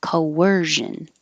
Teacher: It doesn't look like a W, but when you make your lips small for the O, and then they come back, they'll make a W. Coercion with a Z in there.